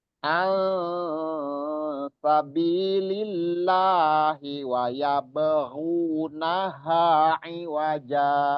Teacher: suara gunnah dan suara ikhfa atau samar itu sama, berimbang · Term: ausat